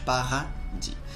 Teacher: aquele Rzinho que a ponta da língua fica embaixo